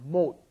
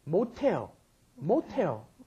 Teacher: 못해요. Because that S at the bottom, when pushed up against followed by an H, turns it into the aspirated sound